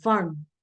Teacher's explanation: हम रे की साउंड बहुत ही कम बोल रहे हैं, वर्ण, वर्ण नहीं बोल रहे। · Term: आधा रे